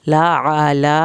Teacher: आइन को हल्क से निकालना है और आइन की ज़बर को लंबा नहीं करना